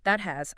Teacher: You feel your tongue go up, but you don't push the air out before the H sound. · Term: stopped T